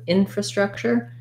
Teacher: Then when we add infra, we just add an in and another schwa here, fra, infrastructure. First syllable stress with secondary stress on the struck, infrastructure.